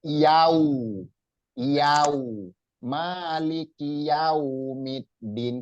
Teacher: Huruf waw itu tempat keluarnya atau asalnya atau makhrajnya itu di kedua bibir.